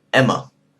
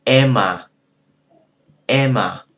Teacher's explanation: What you hear there is more vowel than you hear of the consonant.